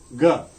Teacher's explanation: ga, as we know, is velar, voiced velar plosive consonant